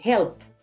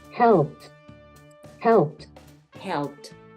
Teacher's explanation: Entonces tienes que hacer un poquito más de fuerza, por lo tanto, con esta letra, mira, te la puse en el listado, esta ed va a sonar como una T. Tú vas a decir helped, helped, helped. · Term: golpe de T fuerte